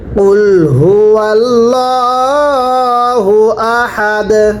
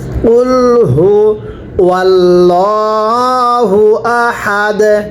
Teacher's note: ওয়াকফের সময় দালটা ধাক্কা দিয়ে পড়তে হবে কলকলা করতে হবে